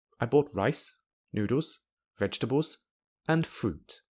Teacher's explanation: In a sentence which contains a list, in other words, several nouns together, the intonation rises at the start of every noun except the final noun. Before the final noun, the intonation falls. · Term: rising-falling intonation